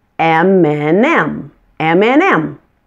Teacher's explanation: The and that's in the middle of the two M's is just pronounced like the letter N.